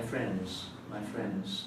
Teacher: singular friend we tend to pronounce the d their friend but in the plural we don't we say friends my friends there's no d